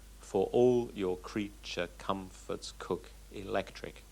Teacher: it's alternating unstressed and stressed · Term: regular rhythm